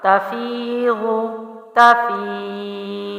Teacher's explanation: تا زبر تا، فا زیر یا فی، یہاں یا مد ہے، ٹھیک ہے، یا ساکن سے پہلے پچھلے حرف کے نیچے زیر ہے تو یا مد ہے، ایک الف لمبا کیا، غود پیش زو، پڑی حرکت جلدی چھوڑا، تفیضو تفیض، ٹھیک ہے۔